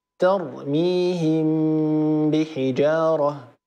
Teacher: ميم ساكنه وبعدها باء فميم تخفى عند الباء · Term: الاخفاء